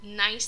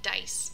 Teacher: the placement is all the same, but the sound isn't sent through the nose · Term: denasalization